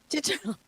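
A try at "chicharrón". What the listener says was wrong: Gotta roll that R.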